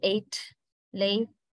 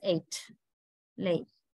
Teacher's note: it is pronounced more or less like a diphthong a little bit like a diphthong unlike in French and Spanish